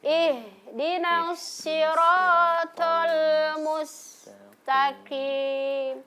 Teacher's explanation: Huruf ha ya yang posisi ee letaknya di tenggorokan bagian bawah bawah ya.